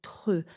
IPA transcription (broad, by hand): tʁ